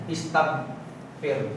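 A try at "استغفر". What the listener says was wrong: Yung ain, tsaka gain, ang tunog niyan ay pag may fatha, ga. Pag kasra, gi. Tapos pag dhamma, gu. Hindi sila gain, gin, guin. So dito, hindi siya istagain, fir. Istag. Kukunin mo lang yung GH niya. Istag, fir.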